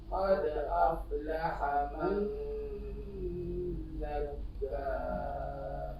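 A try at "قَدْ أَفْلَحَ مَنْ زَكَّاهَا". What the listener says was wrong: Zakka, zai bukan dha. Qad aflaha man zakkaha.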